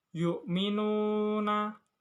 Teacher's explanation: terdapat hukum bacaan matobi'i sebab wawu mati sebelumnya domah. Cara bacanya dibaca panjang selama 2 harokat.